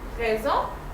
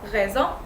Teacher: S is gonna be pronounced Z when it's between vowels. So here it's between A and E, so it's gonna be pronounced Z.